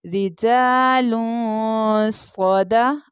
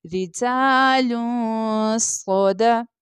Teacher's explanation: لام کے اوپر دمتین یعنی ڈبل پیش کی تنوین تھی، تنوین کے بعد صاد لیٹر ہے جو کہ اخفا لیٹر ہے، اس لیے ہم یہاں پر غنہ کر رہے ہیں